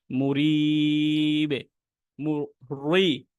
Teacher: র হরফে জের থাকলে র হরফ চিকন করে পড়তে হয়